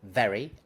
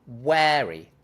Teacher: In the first case, it's short, very, eh. In the second case, it's long, wary, eh.